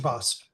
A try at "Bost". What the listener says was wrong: It is not boast. It is not boast. Yes.